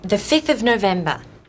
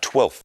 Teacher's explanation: The ones with a v sound, 5 and 12, change their v sounds to f